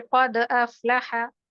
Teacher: क़द अफ़लह में दाल की आवाज में कलकला होते हुए हमको हमजा के साथ मिलाकर पढ़ना है, तो इसमें हमारी आवाज हमजा में भी चली जाएगी, हमजा से मिला दी जाएगी, ज्वाइन कर दी जाएगी, इसीलिए इसका जो कलकला होता है वो कमजोर सा होता है। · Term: कलकलाए वुस्ता